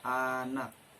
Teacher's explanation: akan saya Jelaskan mengenai huruf vokal a huruf vokal A atau vokal pusat rendah tak bundar · Huruf vokal A atau vokal pusat rendah tak bundar itu contohnya terdapat pada kata anak.